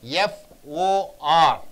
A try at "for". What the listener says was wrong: You have to stress fur. So for functional words, you should not stress on the vowel. For is changed into fur.